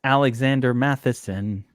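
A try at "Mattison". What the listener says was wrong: I don't believe there's an H in there at all. It's Madison.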